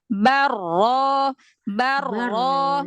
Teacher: takrir itu Getaran yang ringan getaran pada ujung lidah dengan getaran yang ringan